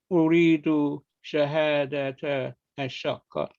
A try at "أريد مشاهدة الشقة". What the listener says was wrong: You forgot the meme here.